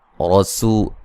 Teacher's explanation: रा साकिन से पहले ज़बर, रा को मोटा अदा करेंगे। यहाँ भी मद्दे जायज़ है।